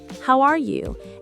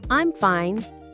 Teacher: we raise our tone when asking questions like, How are you? and lower it when finishing statements like, I'm fine. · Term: intonation